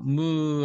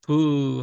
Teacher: 무 하면 입술이 별로 안 열려지는 브 하면 입술이 이렇게 조금 열려지게 돼요 · 자, 그 다음에 입술 소리에서 바람이 입을 열고 앞으로 쭉 이렇게 앞으로 이렇게 나오는 모양을 한 것이 이것이 브 하고 소리가 나죠. 무 하면 입술이 별로 안 열려지는데 브 하면 입술이 이렇게 조금 열려지게 돼서 브 앞으로 바람이 나가는 소리